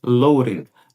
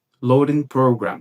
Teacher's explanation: Ele fala simplesmente loading. É como se esse D aqui, ele perdesse o som de D e ficasse como se fosse com o som do nosso R fraco aqui no português.